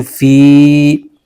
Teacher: یا ساکن سے پہلے زیر آ جائے تو یا مدہ ہوتا ہے، اس کو ایک الف کھینچ کے پڑھنا ہوتا ہے۔